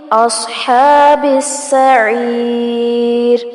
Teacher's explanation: صاد کو پر کیا جائے گا اور ہا پر کھڑی زبر ہے، کھینچیں گے اور با کو سین کے ساتھ ملائیں گے.